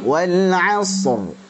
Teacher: perhatikan di sini wal hanya tipis dulu, shad kita alirkan.